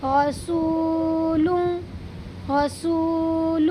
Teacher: اس دو پیش کی تنوین کو ناک میں چھپا کر کے پڑھیں گے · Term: اخفا